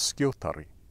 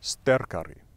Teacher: no matter how long an old norse word gets the emphasis is always on the first syllable